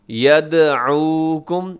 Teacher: یدعوکم یہاں دال ہوگا قلقلہ، اسے یدعو نہیں پڑھنا آپ نے، یدعوکم یہاں پہ تھوڑا سا آپ نے زور لگانا ہے، تھوڑا سا ٹائم لگانا ہے تاکہ جو عین ہے وہ آپ صحیح طرح سے ادا کریں۔